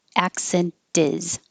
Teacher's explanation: the t sounds like a d in this case it's between the voiced in and the voiced i